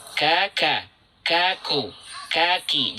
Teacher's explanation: Dari bagian belakang lidah, bagian terdalam, tetapi sedikit ke arah tengah. · Wal qafu aqsal lisani fawqa tsummal kafu asfalu, makhrajnya dari aqsal lisan, pangkal lidah atau paling lidah paling dalam, ya, tapi agak ke tengah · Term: huruf kaf